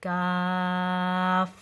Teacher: So here the concept is fatha. So here you're going to stretch the long mud, and at the same time, straight away after, without breaking your breath, stick to the tashdid.